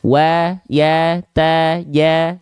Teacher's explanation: Semuanya buka mulut sambil senyum karena fathahnya vokal A, berarti tipis dia. Wa ya ta ya gitu ya, tipis semua.